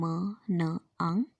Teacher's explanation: Nasal passage में जो एयर है वो पास होती है थ्रू नोज, और फिर नेज़ल साउंड्स प्रोड्यूस होती हैं, जैसे कि म, न, अंग।